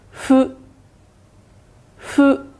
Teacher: 日语中的没有咬唇的动作，是吹蜡烛的动作